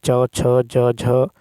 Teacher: है च छ ज झ य च है अल्प प्राण अघोष छ है महाप्राण अघोष ज है अल्प प्राण जो है घोष और झ है आपको महाप्राण घोष